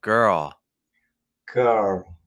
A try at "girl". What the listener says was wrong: Just a little more open again on the dark L at the end. More open. But I can also have my mouth wider. But again, it's not like you have to have your mouth that wide. I would go a little faster on the R.